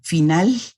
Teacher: tenemos aún en la norma culta una fricatización y ensordecimiento de la L y de la Y en posición final de palabra. Por ejemplo, van a escuchar a los guatemaltecos, aún hablantes de la lengua de la norma culta, decir final o decir hoy.